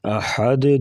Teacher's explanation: ہا کے اوپر مد کریں گے، الٹا پیش بھی ہے اور اوپر مد منفصل یعنی مد جائز ہے، اسے 2 سے 3 الف کے برابر لمبا کر کے پڑھیں گے. احد دال ساکن تو یہاں پر قلقلہ کر کے پڑھیں گے